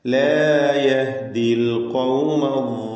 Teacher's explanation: യഹ്ദി എന്നതിലെ ദീർഘാക്ഷരമായ യാ ഇൽതിഖാഉ സാക്കിനൈൻ പരിഹരിക്കുവാൻ വേണ്ടി ഒഴിവാക്കുകയാണ് ഉച്ചാരണത്തിൽ നിന്ന്, ചേർത്ത് വായനയിൽ നിന്ന്.